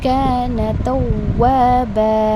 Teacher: کانا کے پاس آپ کو حروف مادیہ الف آ رہا ہے، 2 کاؤنٹس میں کھینچ کر پڑھنا ہے